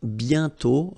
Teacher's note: And then the final T is not pronounced.